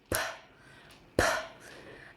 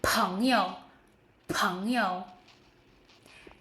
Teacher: P, strong puff of air.